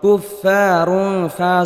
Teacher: দুই পেশ রুন তানবিনের পরে ইকফার হরফ আসার কারণে ইকফা গুন্না অর্থাৎ তানবিনকে গুন্না সহ গোপন করে পড়তে হবে